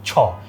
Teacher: ছ উচ্চারণ করতে গেলে আমাদের জিওভাটা আমাদের মুখের উপরের চোয়ালের সাথে একটু টাচ করে ভিতরের দিকে আসে। এখন যারা ভুল করে ছ বলে দেখেন জিওভা দাঁতের দিকে চলে আসে।